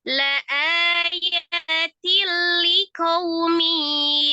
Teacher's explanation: Tanwin ketemu dengan lamnya idgham bila gunna, diidghamkan tidak disertai dengan dengung.